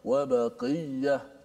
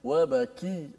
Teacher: kesalahan yang boleh berlaku ialah menukarkan qaf pada kaf. Bila dia renyah sikit qaf jadi kaf. · Qaf dia agak tebal, kaf dia nipis sedikit.